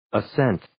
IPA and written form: ə'sent (Ascent)